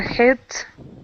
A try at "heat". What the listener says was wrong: at the moment you're saying a bit hit yeah like hit heat e e yeah more long